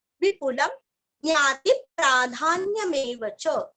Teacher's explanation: वि और पु दोनों भी रस्व, अनुस्वर का उच्चारण आधा म